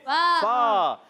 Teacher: اوپر والے دانتوں کے کنارے جب نیچے والے ہونٹ کے تر حصے سے لگتے ہیں تو ادا ہوتا ہے فا